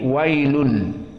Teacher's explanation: Maka hukumnya tanwin bertemu dengan lam, maka idgham bi ghairi gunnah. Idgham maknanya tanwin lam di sini masuk kepada lam yang setelahnya. Dan karena harful lam tidak gunnah, maka hukumnya idgham bi ghairi gunnah.